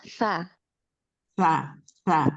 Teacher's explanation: Huruf tsa ini ujung lidahnya bertemu dengan ujung gigi seri atas sehingga ee lidahnya harus terjulur keluar.